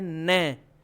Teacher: जैसे ही न बोलने जाओगे ना तो जीभ ऑटोमेटिकली दांतों से थोड़ी सी ऊपर मसूड़ों वाली जॉइंट रेखा पर टकराएगी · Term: वृत् वर्ण